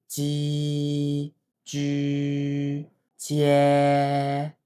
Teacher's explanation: 舌面要先完全贴紧你的上颚，把气憋住，然后稍微放松，裂开一个小缝，让空气出来，气流比较微弱，声音比较短促，也比较扎实